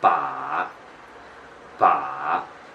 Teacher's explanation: You need to let the tone fall down first and then, rise it again. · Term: the third one